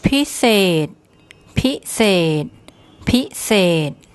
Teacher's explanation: We have one of the high class S consonants, the Sara A, which in this word just makes an E sound. And then our final consonant is the other high class S consonant, but because it's a final consonant, it makes a T sound.